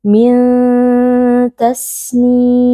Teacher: nun sukun disamarkan lalu dibaca dengan berdengung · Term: ikhfa hakiki